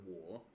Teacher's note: it goes down and then up · the third tone, which is usually described as a dipping and then rising tone.